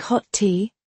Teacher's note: You don't say two T sounds. They often merge into one longer sound.